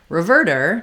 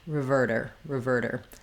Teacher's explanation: we still have the stress on the ver syllable. So we still have our short little r or r for our first syllable.